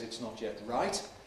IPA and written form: ɪts ˈnɒt jet ˈraɪt (It's not yet right)